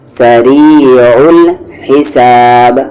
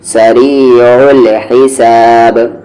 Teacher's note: عین اور ہا کا مخرج مڈل تھروٹ